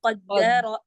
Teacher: دیکھیں قاف موٹا ہے اور را موٹا ہے